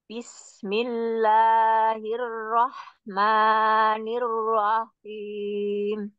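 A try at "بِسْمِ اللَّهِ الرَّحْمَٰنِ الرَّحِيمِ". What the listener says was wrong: Tapi terdengarnya masih kepanjangannya. Bismillah, dua harokat saja. Satu ayunan. Bismillahirrahmanirrahim. Bismillahirrahmanirrahim.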